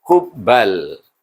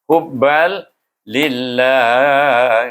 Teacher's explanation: Sebab tanwin bertemu dengan lam atau jum dengan ra. Maka kita baca dia dengan idgham bila gunnah tanpa dengung.